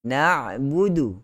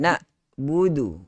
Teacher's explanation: tidak boleh baca dengan hamzah. Sepatutnya dengan huruf ain.